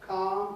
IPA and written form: kɑːm (calm)